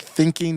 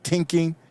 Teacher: like thinking you just say tinking you just say Tink so if you want to use the Jamaican dialect you don't say th